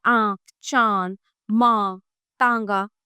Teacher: जिस स्वर के उच्चारण में हवा मुंह और नाक दोनों से निकलती है और थोड़ी सी गर्म होती है उसे अनुनासिक कहते हैं।